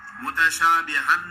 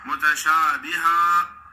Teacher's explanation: الف کی تنوین، 2 زبر کی تنوین جب وقف کرو تو ایک زبر الف کے ساتھ ہی پڑھی جاتی ہے، متشابہن نہیں پڑھیں گے یا متشابہ نہیں پڑھیں گے، متشابہا۔